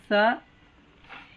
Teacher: ಇದು ಸ ಉಚ್ಚಾರ ಮಾಡಿ ನೋಡ್ರಿ. ಸ ಕೆಳಗಿನ ಹಲ್ಲಿನ ಹಿಂಭಾಗಕ್ಕೆ ನಾಲಿಗೆ ಗಟ್ಟಿ ಹಿಡಿದು ಉಚ್ಚಾರ ಮಾಡಿದಾಗ ಅದು ಸ ಅಂತ ಉಚ್ಚಾರ ಆಗ್ತದೆ